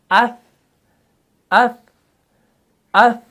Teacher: ہوا ٹکرا رہی ہے ہاتھ پر تو اس کا مطلب ہوا کہ تا جو ہے اس کے اندر صفت حمز ہے